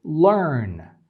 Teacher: you can't really distinguish where the schwa ends and where the R begins there just meshed up together and you can't really separate one